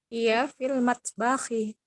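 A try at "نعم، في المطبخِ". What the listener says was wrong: Sahih. Ahsan.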